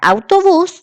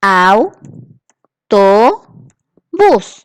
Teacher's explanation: la sílaba tónica cierto donde se acentúa es bus que está en la última posición